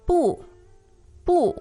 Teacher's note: the word bu alone it's the fourth tone right it's strong